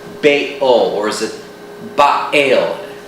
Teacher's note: the glottal stop between the bay and the ul is very difficult to pronounce